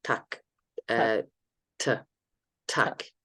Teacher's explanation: the tip comes back to that alveolar ridge we talked about a little bit further back · does a fast movement rather than the tongue stays longer in position. Yeah, there's no projection forward of it like you would have in Zulu, and it's aspirate. So there's no vocalization, there's no movement in the throat.